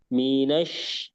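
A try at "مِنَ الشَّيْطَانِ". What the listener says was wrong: Kurang. Alirannya jangan ditahan. Minas. Dibiarkan ngalir saja.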